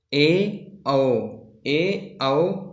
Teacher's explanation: इस प्रकार के स्वर जिनके उच्चारण करते समय हमारा मुख जो है आधा बंद रहता हो उस प्रकार के स्वरों को हम लोग अर्ध संवृत्त स्वर कहते हैं